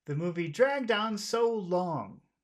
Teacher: we'll start high but we'll finish low because most phrases end low so we'll have to we'll have to change this to low